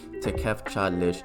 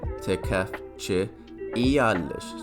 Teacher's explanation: Because it ends with a T, it's going to be turned into a CH. Tekef, and then alish is the normal prefix.